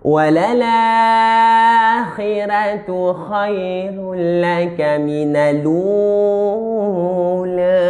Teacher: Dia ada ra tarqiq, sebelumnya baris bawah. Walal akhirah kan baris bawah, khira.